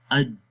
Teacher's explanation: جب ہم اج پڑھیں گے تو آواز مخرج میں بند ہو جائے گی، اج، اور ہوتا کیا ہے پھر اس میں آواز بلند ہو جاتی ہے، آواز جو ہے وہ ایک قسم کی سختی پیدا ہو جاتی ہے اور ہمیں دباؤ محسوس ہوتا ہے۔ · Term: شدت